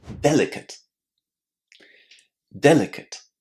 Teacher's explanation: It's just ut, right? A very, very small, very, very short vowel sound there, and then the t